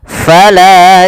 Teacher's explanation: pada lafal fa alirkan nafas, sifat hamsnya